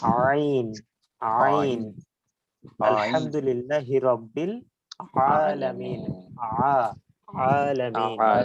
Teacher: আইনটা উচ্চারিত হবে কণ্ঠনালীর মধ্যখান থেকে · আইনটা উচ্চারিত হবে কণ্ঠনালীর মাঝখান থেকে, যেখান থেকে আমরা হা উচ্চারণ করছি সেখান থেকেই আইন উচ্চারণ হবে।